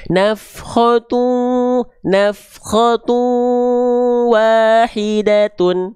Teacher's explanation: Dengan meleburkan bunyi konsonan disertai dengung yang dibaca tahan dua harakat. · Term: idgham bighunah